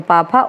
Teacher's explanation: पा फा ओष्ठ होते हैं, क्योंकि इनको बोलते समय हमारे ओंठ आपस में चिपक जाते हैं